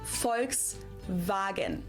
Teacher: the V in German sounds like a F and the W sounds like a V